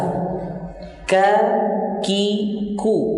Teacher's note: pangkal lidah paling belakang pada posisi menempel langit-langit antara bagian tulang atas dan bagian yang lunak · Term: huruf kaf